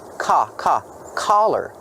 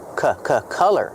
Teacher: Color has the short uh sound like cup and up.